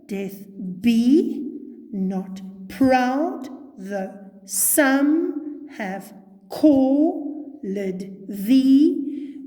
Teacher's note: 5 units of iambus, unstressed, stressed rhythm. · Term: iambic pentameter